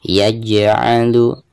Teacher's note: di sini ada huruf jim ketika sukun ya, maka di sini dihukumi qalqalah. Dan cara membacanya harus ada pantulannya